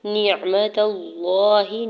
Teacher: تا کے زبر کو لام جلالہ کے ساتھ ملاتے ہوئے لام جلالہ کو پر یعنی موٹا کر کے پڑھیں گے